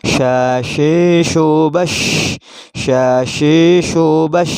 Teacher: Maksudnya adalah meratanya angin dalam mulut. Artinya dalam melafadzkan shin, angin dalam mulut merata ke seluruh ruangan mulut. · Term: tafasyi